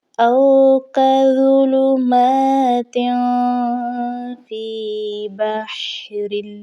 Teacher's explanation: او کظلمات، اب اس لفظ میں آپ دیکھیے کہ ضا آیا ہے اور ضا کو نرمی کے ساتھ پڑھا جاتا ہے۔ اس کے بعد میم کے اوپر کھڑا زبر ہے تو ہم نے اس کو ایک الف کے برابر کھینچ کر پڑھنا ہے، اور تا کے نیچے تنوین کی علامت ہے تو یہاں پر ہم نے اپنی آواز کو ناک میں چھپائیں گے، جیسے او کظلمات فی بحر۔